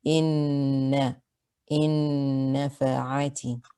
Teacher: The ruling is idgham bi ghunna. You merge and you retain the ghunna. The ghunna should be held for 2 counts.